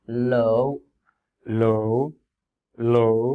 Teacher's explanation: Make sure the tone is falling, not rising.